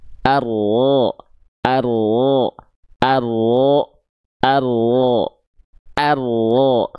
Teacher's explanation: Jadi si ujung lidahnya dia nggak nempel. · Yang ini dan yang ini punggung lidah. Jadi ketika kita melafalkan huruf ro, yang nempelnya tuh punggung lidah. Ujung lidahnya nggak nempel.